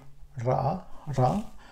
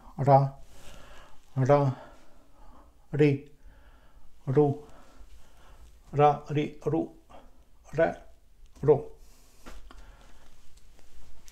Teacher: So the point is just to glide with the tip of the tongue, to glide against this palate, and it will be Ra